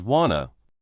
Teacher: In the same way, want to often becomes wanna. The T sound in want might be dropped and to is not stressed.